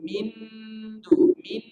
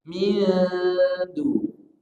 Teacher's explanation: Dengung juga tapi bunyinya samar. Caranya dekatkan ujung lidah ke makhraj huruf dal, bukan ditempel. Jangan ditempel pada makhraj nun. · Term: ikhfa